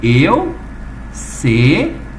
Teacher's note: A tonicidade está no ri.